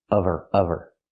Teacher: Because there's no consonant, we need the V sound.